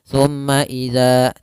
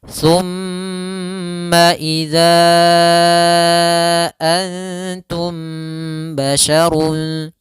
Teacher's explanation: Cara membacanya yaitu suara mimnya ditahan. Thumma idza, jangan langsung, jangan thumma idza, tidak, tapi tahan dulu suara gunnahnya.